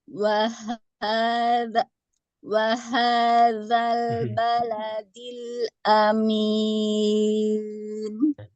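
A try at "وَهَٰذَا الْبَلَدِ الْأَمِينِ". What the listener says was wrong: Haknya masih kesulitan Bu.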